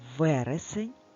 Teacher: в якому складі стоїть наголос в першому складі також перший склад наголошений а скільки всього складів давай порахуємо разом вересень три три склади